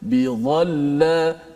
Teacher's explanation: hujung gigi kita diletakkan di atas hujung lidah, keluarlah daripadanya huruf dha